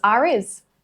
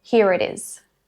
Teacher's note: Instead of pausing between the 2 words, that R gets pronounced as a bridge. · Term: linking R